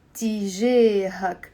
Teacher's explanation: Notice how the jim with the alif, I'm pronouncing it as a.